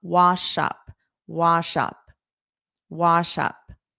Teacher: You hear that SH sound before up.